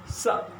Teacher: जीभ के अग्रभाग को दांत में सटा के बोल लेंगे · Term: दंत स